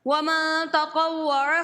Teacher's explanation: نون ساکنہ کے بعد تا ہے اس لیے یہاں پہ اخفا ہوگا، ہم گنہ کر کے ادا کریں گے